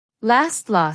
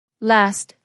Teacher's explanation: open your mouth wide as if you're at the dentist. A long open vowel. In North America, it becomes last short a. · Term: long British a sound, long ah